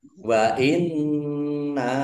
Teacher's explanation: Wa inna nun tasdid ya dibaca dobel nunnya ada tasdidnya. Nun tasdid dibaca gunah. Ya, mendengung ditahan biar tampak dengungannya.